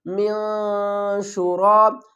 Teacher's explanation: را کو پر پڑھیں گے، را کے اوپر زبر ہے